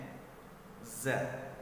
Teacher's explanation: zai keluarnya yaitu ujung lidah kita bertemu dengan papan urat gigi atas. Berbeda dengan urat gigi ya, urat gigi di sini di atas giginya. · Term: huruf zai